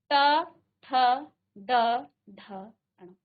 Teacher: तो इनका उच्चारण करते समय आपकी जीभ जो है मूर्धा को आपके मुख के अंदर जो मूर्धा स्थान है उसको स्पर्श कर रही है।